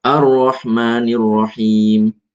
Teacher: Ini banyak ya contoh roh di situ, tapi yang jelas harus diperhatikan tetap getar, tapi bukan banyak getar dan bukan nggak ada getar sama sekali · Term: takrir